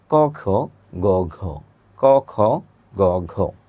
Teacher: প্রথম দুইটাতে কম্পনের তুলনায় পরের দুইটাতে কম্পন বেশি হয়, তাই প্রথম বর্ণগুলিকে বলে অঘোষ